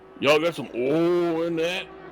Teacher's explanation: Oh, so I follow too many channels on YouTube that are from the South or Southern-ish United States, and they all pronounce oil with like one vowel sound and nothing else. There's no IL in oil anymore. It's just O.